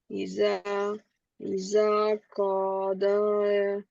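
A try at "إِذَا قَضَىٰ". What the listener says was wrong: হুম কদ, কারণ এটা আলিফ, এটা ইয়া না।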